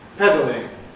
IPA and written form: ˈpedlɪŋ (pedalling)